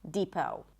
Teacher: It's a high E and then long O as in go, no T.